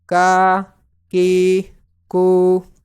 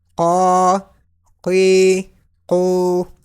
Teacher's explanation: Kaf is pronounced in thin tone and qaf is pronounced in thick tone.